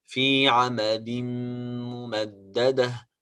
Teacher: The last ayah في عمد ممددة في عمد ممددة. Of course here we have تنوين عمد and followed by the letter ميم, so we have to make إدغام بغنة.